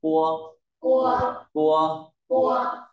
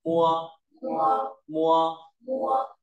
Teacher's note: âm môi môi tức là môi trên phối hợp với môi dưới